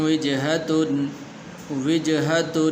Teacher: تو یہاں پر غنہ نہیں کریں گے اس لیے کہ آگے ہا حروف حلقی میں سے ہے